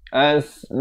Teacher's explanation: Ma itu dibaca 4 atau 5 harakat.